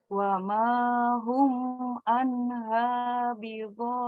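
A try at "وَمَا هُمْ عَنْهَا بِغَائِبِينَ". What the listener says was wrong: Huruf H sama ainnya masih tertukar ya. Haknya seperti H, wa ma hum anha, hum a, wa ma hum anha bighaibin.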